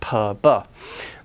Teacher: Those are bilabial or labial, using both lips. Stop the airflow momentarily, then release the air.